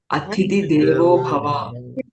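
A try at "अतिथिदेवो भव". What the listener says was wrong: Atithi Deva also one word. Okay, not there should be any space, no pause. Atithi Deva is one word. Like Pitra Devo, Atithi Devo Bhava.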